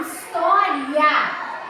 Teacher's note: quando eu falo história o a é vogal saiu forte mas o i nós chamamos de semivogal · o A é vogal, saindo forte. Mas o I nós chamamos de semivogal. Quando esse encontro acontece de vogal vogal e semivogal, ou de semivogal e vogal, isso tem um nome, é um ditongo.